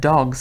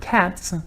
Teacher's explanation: the S at the end of dogs is pronounced as a voiced consonant so it sounds like a Z but the S at the end of the word cats is unvoiced so it sounds like an S that's an example of an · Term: allophone